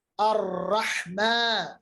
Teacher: ہا کو مخرج وسط حلق سے ادا کرنا